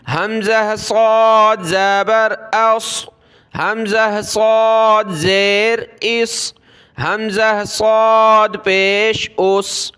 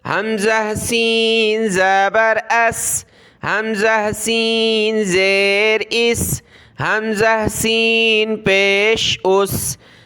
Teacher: بھی ہم نے سیٹی کی آواز نکالنی ہے، سین کی طرح، صاد کو موٹا پڑھنا ہوتا ہے، سین کو باریک